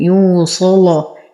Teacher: يغلظ ورش كل لام مفتوحة وقبلها حرف الصاد وصلا، أما وقفا فله الوجهان.